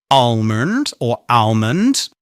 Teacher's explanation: Many native speakers do actually pronounce the L in almond and say almond or almond.